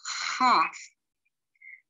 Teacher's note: this sounds like an h in the back of the throat